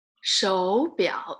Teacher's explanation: there's two third tones together. You change it to second tone and the third tone.